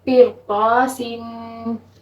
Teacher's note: اب ادھر بھی یہ قا جو ہے یہ بھی حروف مستعلیہ ہے اور ادھر را ساکن سے پہلے کسرہ ہے تو پھر بھی ہم اس کو موٹا پڑھیں گے کیونکہ را ساکن سے پہلے زیر ہے اور را ساکن کے بعد حروف مستعلیہ ہے تو پھر ہم اس را کو موٹا پڑھیں گے · را ساکن سے پہلے کسرہ ہے اور را ساکن کے بعد حروف مستعلیہ آیا تو پھر ہم اس را کو موٹا پڑھیں گے. ویسے اگر حروف مستعلیہ کی جگہ یہاں پہ کوئی اور حرف ہوتا نا تو پھر ہم نے یہ را کو باریک پڑھنا تھا کیونکہ اس سے پہلے کسرہ آ رہی تھی.